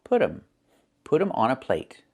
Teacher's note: It's put them. We make a reduction. We say put 'em. The T changes to a fast D.